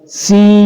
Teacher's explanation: ناک میں آواز کو چھپائیں گے نون ساکن کی اور غنہ کریں گے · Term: اخفا